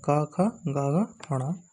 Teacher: का वर्ग का जो उच्चारण स्थान है वह है कंठ